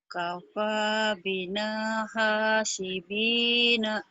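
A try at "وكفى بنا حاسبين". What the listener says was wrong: Kafa. Wa-nya ketinggalan. Wakafa. Wakafa ya, iya. Wakafa bina hasibina.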